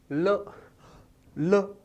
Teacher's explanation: प्राणवायु जीवा के आसपास से होकर बाहर आती है, आसपास से होकर बाहर आती है, इसलिए इसका नाम रखा हमने पार्श्विक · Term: पार्श्विक वर्ण